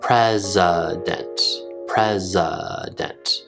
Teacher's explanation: When I speak naturally, I make the schwa sound.